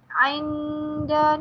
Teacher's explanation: Ainda ni adalah nun mati bertemu dengan dal, dia jadi ikhfa, jadi perlu dibaca dengan dengung.